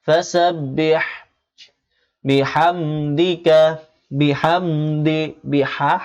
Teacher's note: হা গলার ভেতর ঢুকবে